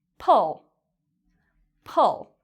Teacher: It's a fast sound, pull. And our lips are spread like this.